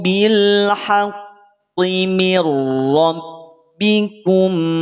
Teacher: Kalau diwasalkan dilanjutkan bacaannya tidak jadi memantul memantul itu ingat sifat memantul ada pada saat dia waakaf atau